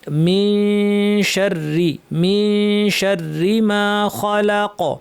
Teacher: এখানে আমরা ইখফা করার সময় একটু টাইম দিব গুন্নাটায়।